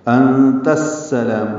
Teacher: انت میں نون ساکن کے بعد تا آنے کی وجہ سے اخفا ہو رہا ہے، کیونکہ تا حروف اخفا میں سے ہے، حمزہ کی آواز کو واضح طور پر ادا کرنا ہے انت، اور تا کو السلام کی سین سے ملا دینا ہے، یہاں پہ الف لام نہیں پڑھا جائے گا، ادغام شمسی ہوگا · لا الف مدہ ہے، 2 حرکات لمبا ہے